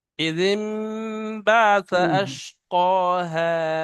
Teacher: এখানে নুনটা উচ্চারণ হবে না, এখানে মিম পড়তে হবে, যেটা ইকলাবের কায়দা